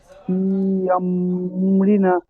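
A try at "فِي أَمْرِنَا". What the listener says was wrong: আম রিনা, না 1 আলিফ টান দেন।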